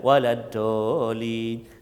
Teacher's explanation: huruf mad bertemu dengan huruf yang bersabdu. Maka kadar bacaannya ialah 6 harakat. Tak kiralah ketika waqaf ataupun ketika wasal bersambung, mesti 6 harakat, no discount. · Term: mad lazim kalimi muthaqqal